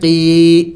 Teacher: وَإِذَا، قاف یا زیر قی، یا مدہ ہے، اس کو بھی ایک الف کے مقدار کھینچنا ہوگا